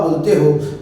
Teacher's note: जब आपकी जीवा का अग्र भाग तालु से टकराता है तो झटके से बाहर आती है जीभ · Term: उत्क्षिप्त व्यंजन